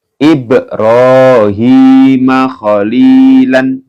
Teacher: Ini dibaca mantul ya karena ada ba yang berharokat sukun ini ya, maka dibaca mantul